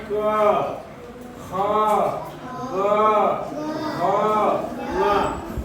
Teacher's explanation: जैसे क वर्ग में हम देखेंगे, इसको हम कंठ से बोल रहे हैं क, ख, ग, घ, ङ, यानी मुंह के पिछले हिस्से से इसका उच्चारण कर रहे हैं